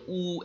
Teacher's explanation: উ একেবারে ছোট হয়ে গেল ঠোঁট দুটো গুটিয়ে গেল মুখের ভিতরে শূন্যস্থান জিরো হয়ে গেল